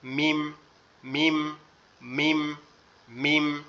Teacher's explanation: আর মিম হচ্ছে ঠোঁটের শূন্য অংশ থেকে, মিম মিম মিম মিম।